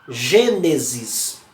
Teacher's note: Ele vai tratar das proparoxítonas, que é quando essa maior inflexão da voz recai sobre a antepenúltima sílaba